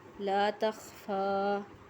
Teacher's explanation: فا کو ایک الف کے برابر کھینچ کے پڑھنا ہے